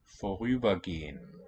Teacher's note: Note that the R becomes the onset. It's vorüber, but here, when they fuse, when these merge, we get vorüber instead of a glottal stop coming in.